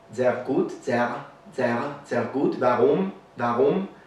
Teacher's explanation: it's kind of similar to the French R, but it's different because it's further back in the mouth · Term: German R